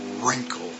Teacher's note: all you hear is R you don't hear any w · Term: WR sound